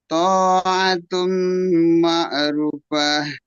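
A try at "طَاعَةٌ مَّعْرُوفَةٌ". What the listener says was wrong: Ru-nya panjang.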